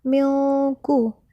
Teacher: Kemudian pada kata milku, di situ terdapat nun sukun bertemu dengan huruf qa, maka dibaca dengan didengung